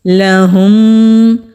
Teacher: میم ساکن کے بعد میم آ رہا ہے تو یہاں پر جو رول اپلائی ہوتا ہے وہ ادغام شفوی کا رول ہے۔ جب بھی میم ساکن کے بعد میم آئے تو دونوں کو ملا کر غنہ کرتے ہیں، یعنی کہ ایک ہی میم ادا ہوگا